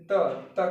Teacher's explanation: जीभ हमारा क्या होता है, दांतों से टकराता है। जब दांतों से जो टकराता है हमारा क्या, जैसे देखिए त क्या हो रहा है, दांतों से टकरा के आवाज निकल रही, तो उसे क्या कहते हैं, कौन सा व्यंजन कहते हैं, हो जाते हैं दंत व्यंजन।